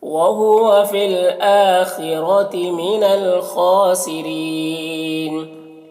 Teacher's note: या में जो मद है मद मुत्तसिल, इससे 3-4 अलिफ के बराबर खींचेंगे।